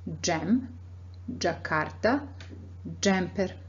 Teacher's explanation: the tongue is touching the palette right behind the front teeth